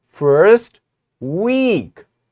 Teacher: First we lower our sound, we make our sound fall, and then we made our sound up and we raise it. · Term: fall rise intonation